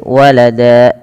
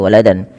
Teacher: Tanwinnya diganti dengan panjang menjadi seperti mad tabi'i. Maka walada, cara membacanya menjadi walada, bukan lagi waladan. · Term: mad iwad